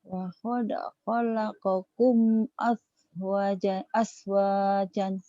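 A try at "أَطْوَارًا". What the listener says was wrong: Roh, nggak ada titiknya. Atwaron. Nggak ada titiknya kak. Nggak ada titiknya kak.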